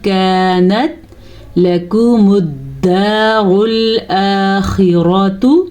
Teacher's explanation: نون ساکن کی آواز کو چھپے غنّے کے ساتھ پڑھیں گے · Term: اخفا